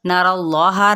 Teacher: را کی زبر کو اللہ کے ساتھ ملائیں گے اور اس کو پر پڑھیں گے